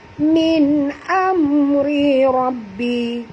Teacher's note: ra yang pertama tipis tarqiq, ra yang kedua tebal tafkhim